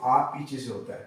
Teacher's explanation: अभी हमने जीभ की क्रियाशीलता के आधार पर भी इसे समझा था, इसे हमने पश्च भी रखा था, तो हम तालु की स्थिति के आधार पर भी इसे देखते हैं, तो ये पीछे से होता है, यानी कि जीभ की क्रियाशीलता, जीभ का पश्च भाग जब तालु के पश्च भाग से स्पर्श होता है तब यहाँ से विपरीत स्वर होता है और आ का उच्चारण होता है। आ, देखिए आ का उच्चारण करिए आप लोग, आ पीछे से होता है।